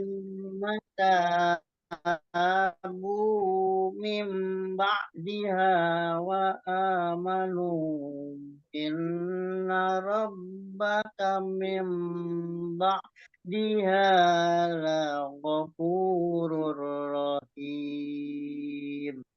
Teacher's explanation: Mim dia itu betul-betul iklab. Iklabnya jadi lebih dengung, dapat dengungnya, bukan samar.